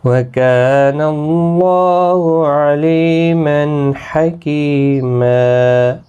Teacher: وقف بالابدال یہاں پر ہوگا، 2 زبر کو بدل کر ایک زبر کے ساتھ وقف کریں گے۔ الف مدہ ہوگا، ایک الف کی مقدار کے برابر کھینچ کر پڑھیں گے۔